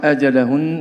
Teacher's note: غنة مقدار حركتين بما يتناسب مع سرعة القراءة. Kemudian pada kalimat ajalahunna ini dengungan pada nun tasydid ini juga dengan teori yang sama tadi, yaitu ukurannya 2 harokat menyesuaikan dengan kecepatan bacaan.